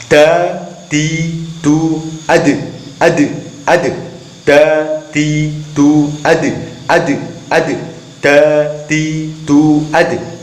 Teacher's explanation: Maka ketika dal ini termasuk huruf qalqalah, pengucapan dalnya ketika disukun harus ada suara pantulan.